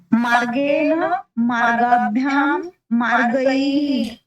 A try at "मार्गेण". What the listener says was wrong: मार्गेण नकारस्य उच्चारणं सम्यक् भवेत्।